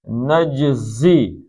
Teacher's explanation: زی پتلا پڑھنا ہے، سیٹی نکلے